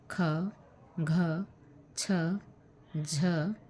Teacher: जिनके उच्चारण में दोहरी यानी अधिक वायु का प्रयोग होता है महाप्राण है इनमें ह के रूप में दूसरी ध्वनि जुड़ी रहती है